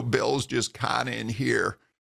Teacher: tends to press his vocal cords together a little too hard